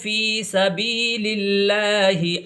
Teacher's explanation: یہاں پر دیکھیے پھر سے اللہ آ گیا ہے، اور یہ اللہ کا لام یہ باریک پڑھا جائے گا